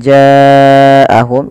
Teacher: Mad yang terjadi disebabkan karena adanya huruf hamzah yang datang setelahnya pada dasarnya ja itu kita panjangkan dulunya dua kan Tapi karena ketemu dengan Hamzah ya dia kita jadi panjang empat harakat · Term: mad wajib muttasil